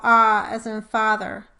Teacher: This slide shows an MRI image of a speaker producing the "ah" as in "father." Notice how the body of the tongue is pulled down and back toward the posterior pharyngeal wall · The ah vowel is called a point, or corner, vowel because it is in the extreme lower right, or back, corner of the vowel quadrilateral. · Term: script-a